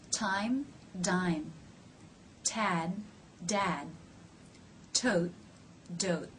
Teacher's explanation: the last two word pairs ended with t's and DS did you notice that I did not release them